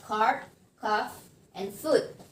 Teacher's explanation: the back of the tongue is raised toward to the soft palate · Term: back vowel